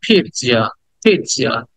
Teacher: পি, এটাকে টিনে বলতে হবে, ই দেন টস একটা, পিৎজা। টটাকে পুরোটা বলা যায় না, সামান্য করে বলতে হয়